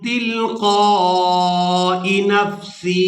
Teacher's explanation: अब यहाँ पर बाद लोग गलती करते हैं कि हमजा यादेर ई इसको खींच कर अदा कर देते हैं, तो यहाँ पर हमने हमजा को खींच कर अदा नहीं करना